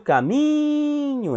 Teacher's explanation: então mi é a sílaba tônica